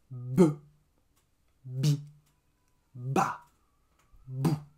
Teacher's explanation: La bouche est fermée, elle s'ouvre vite et le son est court. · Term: le b